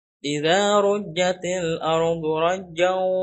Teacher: idgham bigunah ya, dimasukkan ke huruf waw dan ada dengungnya. Masuk ke al-khayshum, ke rongga hidung.